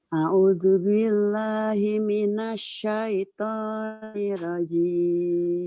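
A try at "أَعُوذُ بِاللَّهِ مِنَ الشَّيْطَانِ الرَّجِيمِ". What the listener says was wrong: Alifnya gini Bu ya, tahun nih Bu. A-nya pendek. A'udzu billah. A'udzu billahi minasyaitonir rajim.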